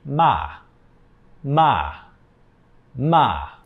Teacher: You, like you're releasing all of your air at once. Again, the main point is just that you start higher in your voice and you go down · So usually native speakers will just go down, maybe a slight rise, but it's pretty quick. The fourth tone is a falling tone. So you start higher in your voice and you go down.